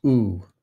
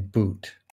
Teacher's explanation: the high back tense round vowel is oo, as in boot.